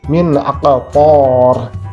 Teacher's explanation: ada nun mati, min, kemudian ada huruf izhar. Maka kita baca secara jelas. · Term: idhar